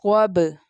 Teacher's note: صاد جو ہے وہ مستعلیہ لیٹر ہے، بولڈ لیٹر ہے، اس لیے اس کو تھکر ٹون میں پرناؤنس کریں گے، اور با لیٹر جو ہے کلکلا لیٹر ہے، با لیٹر کلکلا لیٹر ہے۔